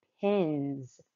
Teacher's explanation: the s in pins now sounds like the letter z the reason why this is is because the letter n in pins is voiced when the final sound is voiced when adding the consonant suffix